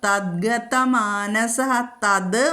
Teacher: തത്ത് എന്നുള്ള തത് മൃദുവാകും ഗ വന്നതുകൊണ്ട്